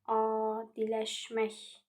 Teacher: İlk sayt uzun tələffüz olunur. A uzun tələffüz olunub. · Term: uzanma